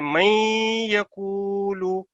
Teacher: نون ساکن جو ہے یا کے ساتھ جب ادغام اس کا ہو رہا ہے تو آپ نے اس کو یہاں پہ 2 سیکنڈ کا ادغام کے بعد غنہ کرنا ہے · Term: ادغام بالغنہ